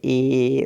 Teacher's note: ए मतलब होंठ जो है फैल गया, मुंह जो है हल्का सा पिचक गया, और जीभ जो है स्थिति जो है बीच में हो जाती है। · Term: अर्ध संवृत्त